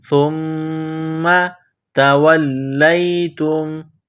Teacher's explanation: میم مشدد ہے، غنہ کریں گے، آواز ناک میں چھپائیں گے